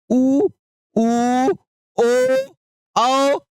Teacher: और जो ऊ होता है ना, कहते हैं आप कहिए ऊ ऊ ओ आओ, ध्यान से देखिए, आप नहीं कहते हैं ऊ ऊ, देखिए जब आप ऊ कह रहे हैं तो आपका पूरा होठ क्या हो जा रहा है, गोल हो जा रहा है,